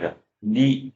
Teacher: 혀끝 이 입천장 의 윗잇몸 부위 에 닿는다 . 이것 을 치경음 이라 고 합니다 .